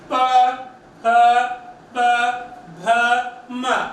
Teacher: जो होठ है वो एक बार मिल रहे हैं वापस खुल रहे हैं, एक बार खुल रहे हैं वापस मिल रहे हैं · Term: ओष्ठीय व्यंजन